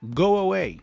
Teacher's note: In between these two vowel sounds, I am producing an extra sound, which is the W sound.